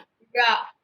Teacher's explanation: நாவின் நுனி மேல்நோக்கி வளைந்து வருடுவதால் என்ன பிறக்கிறது? ழகரம் தோன்றும். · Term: சிறப்பு ழகரம்